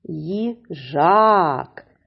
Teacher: наголос падає на другий склад на голосний звук а